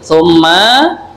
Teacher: Ya, ada dua mendengung. Pertama mim bertasydid, summa.